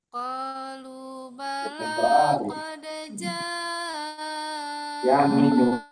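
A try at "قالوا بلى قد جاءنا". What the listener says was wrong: Ini otapnya terlalu tinggi. Tapi oke Bu, ya suaranya mantap. Sudah dianugerahi suara tinggi ya. Qalu bala qad ja'ana nadhir.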